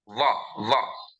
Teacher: This Va is upper teeth and lower lip. Va. This is called Dantoshtha.